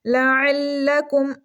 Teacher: عین کو گلے کے درمیان والے حصے سے پڑھیں گے، ہلکی لیٹر ہے یہ، چھوٹے کاف کو منہ والی سائڈ سے پڑھیں گے ہم۔